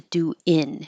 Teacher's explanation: the tongue is coming to the front for a regular in instead of the in in in the back and it could sound like wi if it helps you think